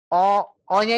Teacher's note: ketika ibu memanjangkan Oya ini ya o oya itu harus tetap tebal Bu Jangan ee jadi tipis